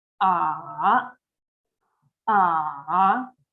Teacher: It starts in the middle, slightly falling, and then raising to the high pitch immediately. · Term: Third tones